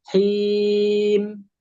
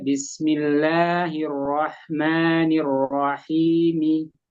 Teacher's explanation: Nah, mi-nya dibaca, bukan disukunkan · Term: waqaf dengan harokat sempurna